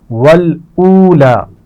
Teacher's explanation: واو مدہ ہے اور لام پر کھڑا زبر ہے تو دونوں کو کھینچ کر پڑھیں گے